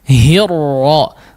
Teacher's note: Maka harus diperhatikan ketebalannya ya. Hirra, tidak terlalu banyak getaran la, tapi hirra disamarkan getarannya. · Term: huruf ra